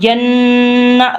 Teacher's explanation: گننا کرنا ہے، ناک میں سے آواز نکالنی ہے کہ نون کے اوپر تشدید ہے